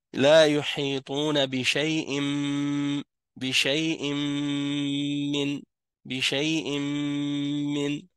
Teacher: Un noun avec une soukoun rencontre un mime. Qu'est-ce que ça fait? Ça fait un idgham. Un va rentrer dans l'autre.